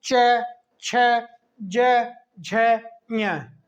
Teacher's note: जीभ तलवे से ऊपर टकराती है इसमें बोलते समय, इसलिए इन वर्णों को हम तालव्य कहते हैं